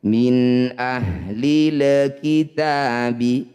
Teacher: min ahlil kitabi alif diikuti lam sukun ini disebut bacaan izhar qamariyah atau alif lam qamariah. Cara bacanya lam sukun ini baca dengan jelas. Jangan diseret-seret bunyinya.